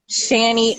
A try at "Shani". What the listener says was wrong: Yeah, it's Shani. Long A.